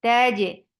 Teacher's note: ta is very sharp, no flow of sound.